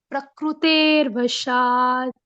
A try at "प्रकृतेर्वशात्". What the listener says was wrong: शाबाश।